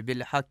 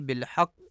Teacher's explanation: دو نقطے والے قاف کو کاف پڑھا جاتا ہے بالحق کی، جو کہ درست نہیں ہے، درست ادائیگی بالحق ہے۔